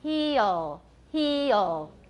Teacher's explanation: E is pure with the D at the end, not so pure with the L at the end.